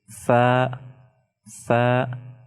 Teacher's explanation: When you are pronouncing fa, the edge of your top incisor teeth are touching the lower lip